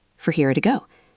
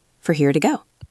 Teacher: notice the word for became fur and the word to became ta.